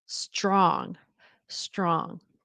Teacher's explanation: Notice if you have the tendency to say strong, it sometimes helps to realize that the tr is very often pronounced as the ch like a ch and an r.